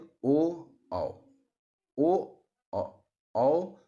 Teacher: ओठ दोनों की सहायता से करें जैसे ओ औ ओ औ दो वर्ण ऐसे हैं जिनको उच्चारित करने के लिए हमें कंठ और ओठ दोनों का प्रयोग करना पड़ता है